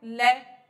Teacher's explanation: दांतों से जीभ बिल्कुल चिपक जाती है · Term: पाशविक